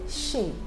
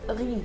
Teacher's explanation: when you have Z at the end of a word, like in the word chez, the Z is silent. In the word riz, the Z is silent.